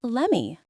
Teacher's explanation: The t and let is stopped. We don't release the air and then the m takes over.